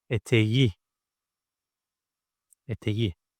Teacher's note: K is an explosive consonant. It continues with a vowel, so it needs to soften. It needs to transform itself to softçe.